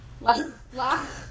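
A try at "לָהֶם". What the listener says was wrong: Don't. That's an H sound at the end. What do we do with H's at the ends of words? They're silent. Lahem. It's just an H sound. Lahem. The next to the last word is lahem, like the hem of a skirt.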